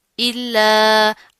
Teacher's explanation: لام کے اوپر تشدید آ رہی ہے، مضبوطی سے پڑھیں گے، اور ساتھ اوپر کیا مد آ رہی ہے، تو اس کو کھینچ کر پڑھیں گے، لمبا کریں گے